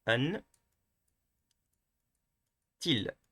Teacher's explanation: once again we are going to stress on the last one